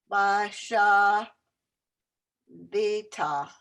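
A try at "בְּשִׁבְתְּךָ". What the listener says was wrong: Check the vowels again. Be, she, the, techa. So you got 3 silent vowels all in the same word.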